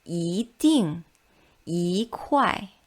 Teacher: When E is followed by a fourth tone syllable, it changes into the second tone